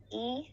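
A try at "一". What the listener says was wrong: E, yeah, big longer, yeah. longer. E.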